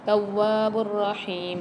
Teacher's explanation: ہا کے ساتھ یا مد آ رہی ہے، اس کو ایک الف مدار کھینچ کے پڑھیں گے